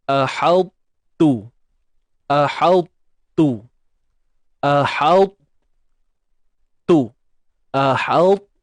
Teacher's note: Tuan-puan tebalkan bunyi ta tu. Cuma tuan-puan buang sifat lantunan yang ada pada huruf ta. Seperti yang kita maklum, huruf ta yang sukun, akan adanya sifat lantunan, qalqalah. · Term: idgham